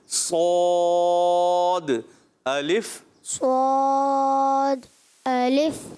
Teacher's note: اچھا سواد ہونٹ گول نہ کریں, سواد بغیر ہونٹ گول کے موٹا بھی کرنا ہے. زبان کی جڑ اوپر اٹھائیں, درمیان بھی اوپر لے جائیں اور پڑھیں صاد, منہ بھر کے.